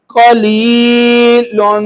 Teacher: یا ساکن اور پیچھے زیر آگے. یا کیا ہے؟ مدہ ہو گئی. ایک الف برابر لمبا کیا.